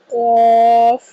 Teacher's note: قاف زبان کی جڑ اور تالو کے نرم حصے سے قاف کی ادائیگی کی جائے گی۔ قاف کو ہمیشہ پورا ادا کیا جائے گا۔